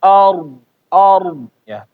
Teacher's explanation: Ketika membaca ard ya, a-nya tipis ya. Bapak jangan gara-gara ro-nya tebel, bo-nya tebel, akhirnya a-nya ikutan tebel.